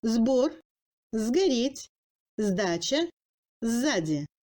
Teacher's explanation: Le S subit plusieurs assimilations. Le phonème S passe en Z devant les consonnes sonores ayant une paire sourde, sauf les lettres V et G.